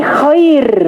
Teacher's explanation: Karena kapan ya sukun datang sebelum ro yang disukun? Maka ro yang disukun itu mutlak dibaca tipis. Mau sebelum sukun itu kasrah ataupun fat fathah.